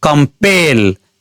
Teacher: त्यस्तै कम्पेल दुई वटा सिलेबल भएको वर्ड हो यसलाई उच्चारण गर्दा खेरि दोस्रो सिलबल पेलमा बढी जोड पर्छ। · यसलाई उच्चारण गर्दाखेरि दोस्रो सिलेबल पेलमा बढी जोर पर्छ। कम्पेल, यहाँ पेलमा स्ट्रेस पर्छ।